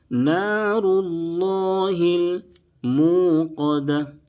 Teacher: واو ساکن سے پہلے پیش ہے، واو مدہ ہوگا، اس کو ایک الف کے برابر کھینچیں گے